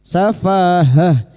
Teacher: fa fathah diikuti alif dua harakat mad thabi'i safahah ta marbutah di sini yang dibaca waqaf Maka bunyinya ha safahah.